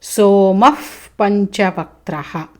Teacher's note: సోమః విసర్గ ఉంది పంచవక్త్రలో ప వచ్చింది కలిపితే సోమఫ్